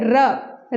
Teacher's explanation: र बोलते ही हमारी जो जीवा है वो झंकृत होती है और वो गोल हो जाती है, एकदम बेलनाकार हो जाती है, इसलिए इसे लुंठित भी कहा गया है।